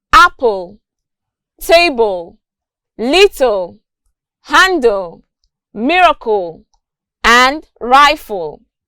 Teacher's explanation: And also, two consonant clusters in final position, we have the consonant sounds p, b, t, d, k, g, f, plus the syllabic L